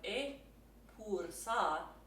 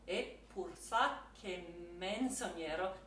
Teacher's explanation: You have e pur sa, so that P is going to get doubled.